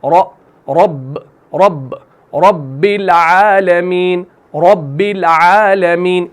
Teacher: रॉ के ऊपर जब जबर होगी तो उस रॉ को आपने मोटा पढ़ना है, यानी उसको आपने मुंह भर के पढ़ना है।